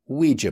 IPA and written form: ˈwiː.dʒə (ouija)